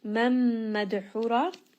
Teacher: This is going to be idgham, nun sakin followed by the letter mim, so merge them together.